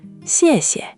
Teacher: let the second syllable just fall away lightly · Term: neutral tone